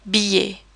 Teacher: We almost pronounce it like an English Y sound, and we pretend the double L's are not there at all.